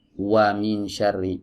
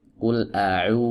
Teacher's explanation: harokat dhammah ini adalah harokat dengan vokal u, maka wawu yang ada di sini juga vokalnya u, ya, bukan w. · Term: wawu madiyah